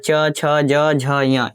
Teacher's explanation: च ज झ ञ ये तालु से बोला जाता है